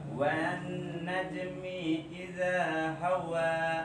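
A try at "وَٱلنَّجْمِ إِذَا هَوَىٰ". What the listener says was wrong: Mi-nya jangan kepanjangan. Mi idza. Wan najmi idza hawa. Kepanjangan di idanya.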